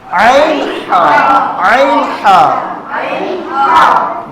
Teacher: بیچ حلق سے عین حا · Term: حروف حلقی